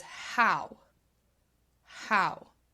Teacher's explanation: the W is actually part of the diphthong, and if you remember, that's the vowel plus either the W or the Y, but I've highlighted it here because it is a W sound.